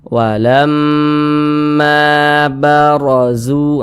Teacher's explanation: Huruf ra, kemudian dia memiliki tanda baca fathah nih baris satu ke atas ini tanda baca fathah. Maka huruf ra yang memiliki tanda baca fathah maka dia dibaca tebal, dibaca tafkhim sehingga pangkalisan kita itu naik terangkat ke atas ketika kita mengucapkannya.